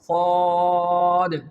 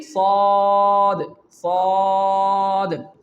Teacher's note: During its pronunciation, you have to make sure that there is no whistle sound will produce during the pronunciation of the letter Saad. But, when you pronounce the letter Saad, you can feel there is a thickness in the sound and the rising of your back part of your tongue.